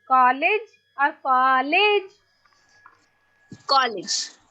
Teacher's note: The first will be stressed and second will be unstressed.